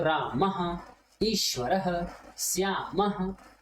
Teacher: जब हम विसर्ग को बोलते हैं तो हमें आधा ह बोलना पड़ता है